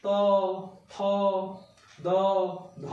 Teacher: এগুলি উচ্চারণ করার সময় জিভটা দাঁতে এসে ঠেকছে। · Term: দন্তন্য ধ্বনি